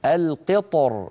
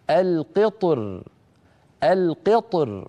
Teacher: يفخم الطاء ويرقق الراء أيضا من غير تكلف، هكذا القطر القطر، فيفخم الطاء ويرقق الراء عند الوقف.